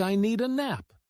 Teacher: It often sounds like I need a nap. The words need and a connect so smoothly that the D sound blends in. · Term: linking sounds